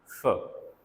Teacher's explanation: Here we have not blocked air, एक मामूली सा नैरो सा पैसेज जो है we have kept it open so that the air could escape through it. और एयर जब निकलती है तो वो दोनों आर्टिकुलेटर्स के साथ रगड़ खाते हुए निकलती है। ठीक है, ऊपर वाले टीथ और जो नीचे वाला लिप है, इन दोनों के साथ फ्रिक्शन जो है वो काज होती है। · Voiceless. There is no vibration. So it's a voiceless sound. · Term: फ्रिकेटिव